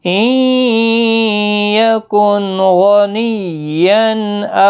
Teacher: نون ساکن کے بعد حروف حلقی کا غائن آیا ہے، یہاں پر اظہار حلقی ہوگا، گنہ نہیں ہوگا۔